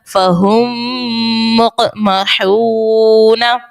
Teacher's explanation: میم ساکن کے بعد ایک اور میم ہے، ادغام شفوی کا قاعدہ ہوگا اور غنہ کریں گے